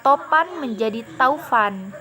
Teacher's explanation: Vokal o berubah menjadi au.